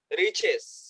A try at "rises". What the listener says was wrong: এই তো পারস তুই বেটা, রিচেস, দা সান রিচেস, রাইজেস, রাইজেস, রিচেস না, রিচ তো হচ্ছে ধনী, রিচেস তো মানে ধনী। রাইজেস, R I S S, রাইজেস হবে কেমন, এটা ইজ।